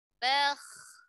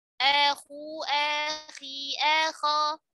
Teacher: Kha sukun ketika sesudah fathah dan dhammah tebal.